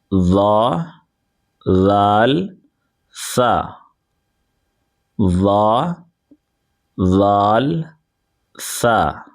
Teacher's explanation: जबान का सिरा और ऊपर के दांतों के अंदरूनी किनारे से अदा होता है।